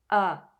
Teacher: The a sound in French is similar to the pronunciation of the letter A in the American pronunciation of father. The mouth is well open. The lips are slightly stretched. The tongue is in a central position. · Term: oral vowel, oral vowel a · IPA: [a]